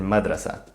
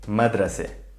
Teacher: In standard Arabic, the sound of TA MARBUTA is a, as in madrasa. In the dialect though, this is raised to e, madrase. So the default pronunciation of TA MARBUTA in Palestinian Arabic is e.